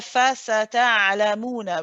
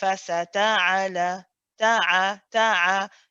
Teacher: The ayn is just held just for a small amount of time, same as the lam, which is a tawassut.